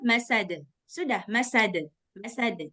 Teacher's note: ada juga yang tambah-tambah Hamzah di ujung masad nah dia jangan ditambah-tambah Hamzah di ujung